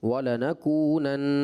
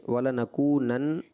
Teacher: اسی طرح وَلَنَكُونَنَّ پہ آپ نے جب وقف کیا تو بیٹا جب نون مشدد پر وقف کریں گے تو اس کی غنہ کی مقدار پوری کریں گے